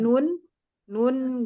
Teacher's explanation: ada sebagian mengalir ke hidung gitu loh karena terbukanya rongga hidung dan tertutupnya rongga mulut